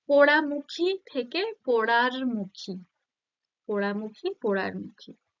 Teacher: রটা কি, স্বরধ্বনি না ব্যঞ্জন ধ্বনি, ব্যঞ্জন ধ্বনি। তো মাঝে যেহেতু একটা ব্যঞ্জন ধ্বনির আগমন ঘটছে, তাহলে এটা কি হবে, মধ্য ব্যঞ্জন আগম।